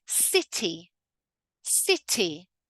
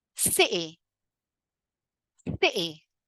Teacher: The first one is a full emphasized T and the second one is called the glottle T where we cut it completely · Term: glottal T